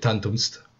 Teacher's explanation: So you have this one way of saying it, tantumst, or excuse me, tantum est, where that M kind of gets eaten